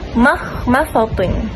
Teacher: Ma perlu ditipiskan, tidak boleh ikut kepada huruf sad yang tebal.